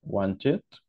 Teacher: Cuando tenemos aquí el sonido de la T y el sonido de la D, se pronuncia como si fuera ED en el pasado